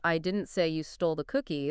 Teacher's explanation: they might put extra emphasis on didn't to emphasize that they're innocent